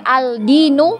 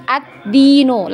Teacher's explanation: Langsung melebur di huruf dal. Jadi huruf lamnya tadi ini sudah kita anggap tidak ada ya.